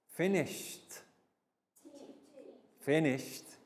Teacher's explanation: finished is the correct sounding of the e d pronounced as t